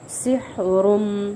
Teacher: سین کو میں سیٹی لانی ہے، سیٹی واضح کرنی ہے. ہا کا مخرج اچھے سے ادا کرنا ہے، درمیانی وسط حلق سے نکلتا ہے یہ ہا.